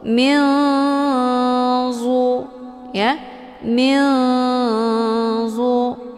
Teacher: nunnya disamarkan kemudian siap-siap menuju ke huruf dha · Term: ikhfa awsat